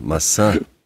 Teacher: Not massa, massa. So you have to have a little nasal sound at the end.